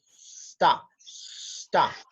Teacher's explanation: La U que está ahí suena como una A.